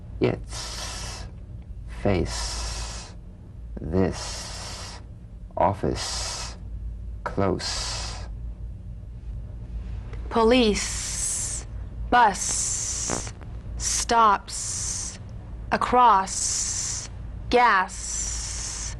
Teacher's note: to the Z unvoiced s sound fricative tongue to gum Ridge the S is like the Z except it's unvoiced so it's the same tongue placement as the Z the Z the S is like a gentle escape of steam